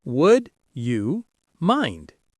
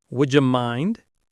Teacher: The stress is on mind. Notice how would you often blends into would ya.